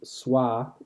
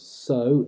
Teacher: Between a consonant and a back vowel, W disappears.